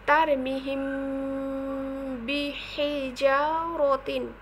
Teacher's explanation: দুই ঠোঁট মিলিয়ে গুণনা করতে হবে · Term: ইকফায়ে সাফাবি